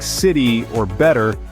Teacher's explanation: about the American flap te in words like City or better the T sounds almost like a soft D